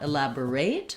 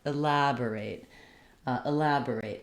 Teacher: I want my main length to be on the lab syllable. So that's for the verb. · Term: second syllable stress